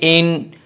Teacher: نون مشدد ہے اس لیے یہاں پر غنہ بھی ہوگا